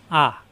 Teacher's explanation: কণ্ঠনালীর শুরুতে উচ্চারণ আহ গলার ভিতরে যাবে না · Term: হামজা